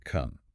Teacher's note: It starts with a sharp, plosive K sound, a sudden release of pressure, and moves into a sustained, open nasal resonance.